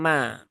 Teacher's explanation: huruf mim ini adalah huruf yang tipis, maka jangan diucapkan dengan menebalkan suara ya menjadi me ya, tapi dia ma ya.